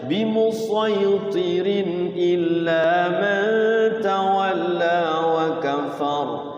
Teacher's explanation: Nah itu sodnya harus dibaca sod, itu tetap sod, isti'la tebal.